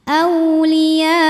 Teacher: diujung pakai naber agar terbawa hamzahnya